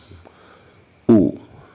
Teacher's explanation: Mulut kita pun harus condong ke penyebutan U, monyong sedikit. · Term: huruf U